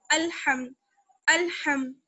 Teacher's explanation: میم کو کھینچنا نہیں ہے، جیسے الحم، ہم دیر نہیں لگانا ہے، جلدی سے پڑھنا ہے